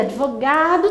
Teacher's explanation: advogado tem a penúltima sílaba tônica